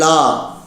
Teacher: நாவின் இரு பக்கங்கள் தடித்து மேல் அன்னத்தின் நடுப்பகுதியை தொடுவதால் தோன்றும் எழுத்து லா